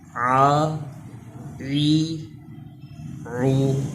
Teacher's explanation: عین کا مخرج ہا کی طرح حلق کے درمیان سے تھوڑا تکلف سے شروع میں ہی ادا کرنا پڑتا ہے